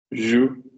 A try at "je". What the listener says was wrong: Not jou, not ou, je. Vibration in the chest. What's the vibration on its own without the J? Say say je. You remember I said the E when it's not got an accent is and when it's got an accent is e. So say for me je. Vibration in chest. Je.